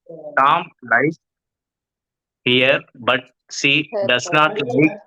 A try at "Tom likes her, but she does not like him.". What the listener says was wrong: ஹர்னு படிக்கிறீங்க, ஹியர்னு படிக்கிறீங்க.